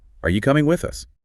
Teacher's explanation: Notice how the pitch might rise a bit on you and with us, then maybe dip at the end.